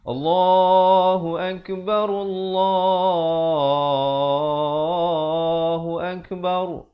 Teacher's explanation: Tapi dalam Al-Quran di sini tak boleh baca akbar, kena baca akbar, ra-nya dibaca tebal